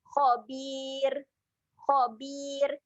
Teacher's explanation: ra kat hujung ni dia menjadi ra yang nipis